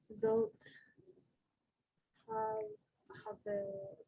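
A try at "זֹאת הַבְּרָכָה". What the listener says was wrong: hab, because it has the dot in the center, so it's the hard sound. Habracha. Zot, habracha.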